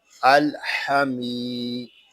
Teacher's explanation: میم کو ہم ایک الف تک کھینچ کر پڑھیں گے کیونکہ یہاں یا مدہ ہو رہا ہے